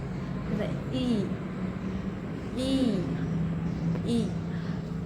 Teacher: tarik sudut bibir ke samping seperti tersenyum. Posisi lidah tinggi diangkat bagian depan lidah ke arah langit-langit mulut depan. Tahan bunyinya sedikit lama karena ini merupakan bunyi panjang.